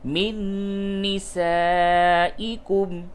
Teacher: نون ساکن کے بعد نون ہے، ادغام مع الغنہ کیجئے